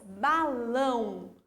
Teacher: Lão é a minha sílaba tônica, a minha sílaba mais forte. E ela é a última. Então, ela é uma oxítona, tá?